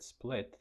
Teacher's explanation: the t is syllable final, and it's not aspirated